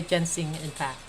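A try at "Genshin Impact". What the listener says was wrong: Genshin? It's not ginseng impact. Ginseng is like a root that the Asian people drink for like eternal life. Genshin is this game.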